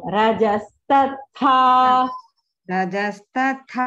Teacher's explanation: there is no mahaprana in stha only last tha is mahaprana